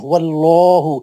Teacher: لام جلالہ موٹا پڑھیں گے